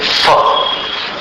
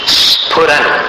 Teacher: स्फुरन में दोनों हठ मिलाना है स्फुरन स्फुरन नहीं फ नहीं फ जो बोलते हैं ऊपर के दांत और नीचे के ओठ को मिलाकर बोलते हैं फ लेकिन यहां क्या बोलेंगे फ दोनों होठों को मिलाकर